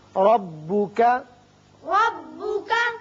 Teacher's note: را پر ہوگا، اوپر زبر ہے